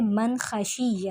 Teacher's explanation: من خشیہ میں نون ساکن کے بعد خا آ گیا ہے جو کہ حروف حلقی میں سے ہے، اور یہاں پر اظہار ہوگا